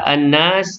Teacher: An-nas, nun yang bertajdid, wajibul gunnah, wajib dengung sekadar 2 harakat